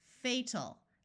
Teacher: first syllable is accented so we use the long sound and the a l sound is going to schwa so it's not going to be a clear Al sound